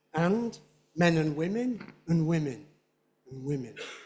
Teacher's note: and is normally pronounced without the d